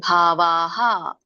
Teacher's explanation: ಆ ಸ್ವರ ಕೂಡಿರೋದ್ರಿಂದ ಹಕಾರ ಕೂಡ ವಿಸರ್ಗ ಕೂಡ ಹ ಬರುತ್ತೆ